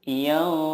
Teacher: menyamarkan nun sukun dan disertai gunnah 2-3 harokat. Yang dimaksud dengan menyamarkan di sini adalah ketika kita mendengungkan atau menyamarkan nun sukun itu, lidah kita sudah siap ke huruf berikutnya. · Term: ikhfa hakiki